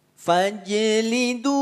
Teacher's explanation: Fa tak perlu dipanjangkan bacaannya langsung masuk pada huruf Jim yang dipantulkan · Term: Qalqalah